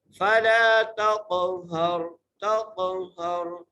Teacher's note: ہا کو را سے ملانا ہے، را کو موٹا کر کے پڑھنا ہے.